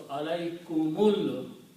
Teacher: when you are reading together, alaykum and al-manna, you do not pronounce this alif in between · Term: hamzatul wasal